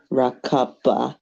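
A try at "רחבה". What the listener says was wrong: רכבה. Yeah, רכבה. This is a shva, so it's gonna connect. It should connect, but like.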